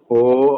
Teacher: ಮಕಾರ ಉಚ್ಚಾರಣೆ ಮಾಡಬೇಕು ಮೂಗಿನಿಂದ ತುಟಿಗಳನ್ನು ಮುಚ್ಚಿ